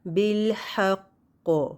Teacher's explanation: کیونکہ یہاں شد والا قاف ہے تو ہم نے تھوڑی دیر قاف کے مخرج پہ پریس کر کے رکھنا ہے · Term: قلقلہ